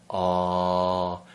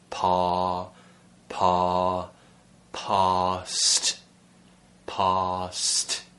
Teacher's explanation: the tongue is really far back and pushed down okay so you kind of push it down and slide it back into the mouth and open the throat